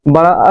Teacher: बड़ा आ के उच्चारण में सबसे ज्यादा मुंह खुलता है। इसलिए विवृत स्वर के अंतर्गत केवल एक वर्ण बड़ा आता है।